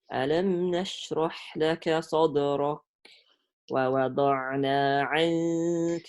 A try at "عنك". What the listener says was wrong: عنك. Close the مخرج of the kaf. Don't say عاك. عنك. Because we prepare ourselves for the next letter when we do the إخفاء.